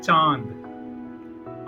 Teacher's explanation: अनुनासिक स्वरों का एक गुण है जहां उच्चारण में हवा नाक और मुंह दोनों से निकलती है।